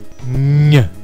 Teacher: E uma palatal nasal sonora, que é o nha